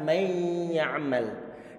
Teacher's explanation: Dua huruf, yang pertama sukun yaitu huruf nun, dimasukkan dalam huruf ya yang berharokat sehingga menjadi satu huruf harfan wahidan, masdudan ataupun musyaddadan, menjadi satu huruf yang bertasydid. · Berarti nanti di saat antum mendapatkan salah satu di antara huruf 6 ini jatuh setelah nun sukun ataupun tanwin, maka harus antum pikirkan ini nunnya harus dihilangkan dari segi suara ini, karena diidghamkan pada huruf yang kedua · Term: pengidghaman, idgham bi gunnah